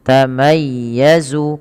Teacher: tamayya dipanjang tapi dia ditekan dengan lembut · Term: bacaan Lin, bacaan lin